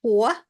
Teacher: A little bit of that HW switching, Hwa, little breathiness, but the W, just like the plain W, is fine.